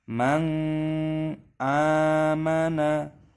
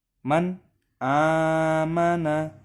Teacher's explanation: lafadz Man aamana ini hukumnya dibaca izhar halqi cara membacanya adalah tidak boleh pada lafadz tersebut dibaca berdengung